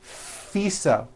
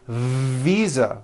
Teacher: I said fisa with an unvoiced F I should have said visa with a voiced v